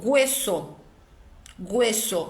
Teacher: O H seguido de UE com som de G.